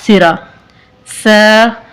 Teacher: जुबान की नोक और सनाया उलिया का सिरा